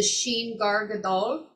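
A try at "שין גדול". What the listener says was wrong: It's Shin. It's not Gar Gadol. It's because that whoever circulated that paper wrote it wrong. It's Gadol. There's no R.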